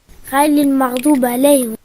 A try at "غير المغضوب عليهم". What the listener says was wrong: Ce n'est pas غيلي. غيلي non c'est غيري. غيري car il y a une grande différence entre حرف اللام et حرف الراء. لي ري. لي ري. غيلي غيري. غيلي غيري. غير المغضوب عليهم.